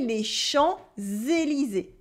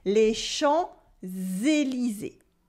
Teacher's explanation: the S that is supposed to be silent in les champs, without anything after, becomes a Z sound because we have Élysée after with un E in French. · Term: la liaison